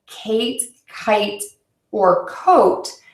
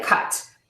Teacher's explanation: your mouth moves quickly from one position to another to create one vowel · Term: movement vowels